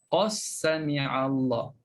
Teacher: Dal bertemu dengan sin di situ. Jadi kita idghamkan terus.